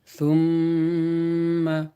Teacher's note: سا میم پہ سم، میم کے اوپر تشدید ہے، لہٰذا میم کو 2 مرتبہ پڑھیں گے. ایک بار پیچھے والے حرف سا سے ملا کر اور ایک بار خود میم کو.